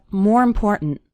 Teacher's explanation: the word more kind of runs into the word important and the last syllable of important kind of gets reduced we